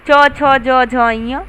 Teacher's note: ऐसे व्यंजन जिन्हें बोलते समय तालु पर अधिक बल लगता है अथवा जिन्हें बोलते समय जीभ तालु को लगती है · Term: तालु व्यंजन